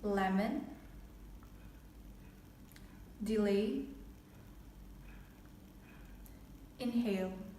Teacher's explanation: it's a consonant in which the air escapes through the sides of the tongue the only sound in this manner is live as in lemon